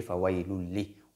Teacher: Le tanwin, le noun qui se trouve dans ce tanwin, le noun est introduite dans la lettre lam, mais sans ghunna, sans nasalisation. On dit fawailul li. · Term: idgham sans nazilement